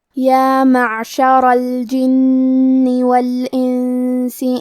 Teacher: کیونکہ را پہ زبر ہے تو یہاں را کا حکم ہے تفخیم. ہمیں حرف الرا کو موٹی آواز میں پڑھنا ہے · کلمت یا معشرہ میں حرف العین ہے اور عین کی ادائیگی حلق کے درمیان والے حصے سے ہے. کیونکہ را پہ زبر ہے تو یہاں را کا حکم ہے تفخیم.